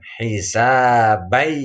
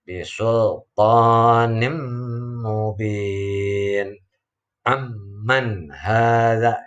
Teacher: huruf nun mati atau tanwinnya dimasukkan pada huruf berikutnya sehingga menjadi satu huruf yang bertasydid disertai dengan suara dengung sepanjang 2 harakat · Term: idgham bi gunnah